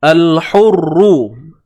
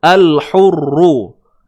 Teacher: Ru ni dibaca dengan tebal sebab dia baris depan. Tak kisahlah dia bersabdu ke tidak, tapi sebabkan dia baris depan, maka zahirkan sifat yang tebal. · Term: Ru tebal